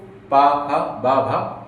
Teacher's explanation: [गला साफ़ करने की आवाज़] इसको प भ ओठ जो है आपस में टच हो रहे हैं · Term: ओष्ठ